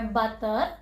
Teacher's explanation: flap T, sound like a D, occurs between two vowels in American English